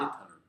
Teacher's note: See, again, you see the LE here? But we need the schwa before the L.